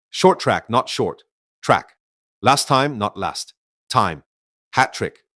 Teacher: two identical consonants meet at word boundaries and instead of pronouncing both you usually pronounce only one. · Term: cluster simplification